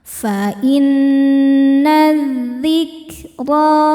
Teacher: Sebab alif lam menghadapi huruf syamsiyah yaitu dzal. Cara bacanya alif lam lewatin enggak perlu dibaca. Masukkan langsung ke dal atau diidgamkan. Idgham. Syamsi. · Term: alif lam syamsiyah